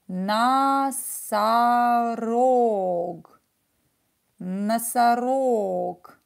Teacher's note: Ударение на О. This O is stressed. So pronounce it as O. These two are not stressed. So we will pronounce them as A.